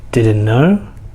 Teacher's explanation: The T becomes silent, and of course K is already silent.